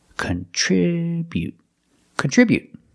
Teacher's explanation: the air with the tongue and don't release the T contribute remember to put the stress on the second syllable